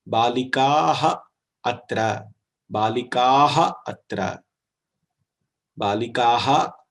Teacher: Visarga disappears and there is a Visarga Lopa which is happening.